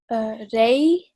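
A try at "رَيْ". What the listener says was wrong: Yes, excellent. Ray.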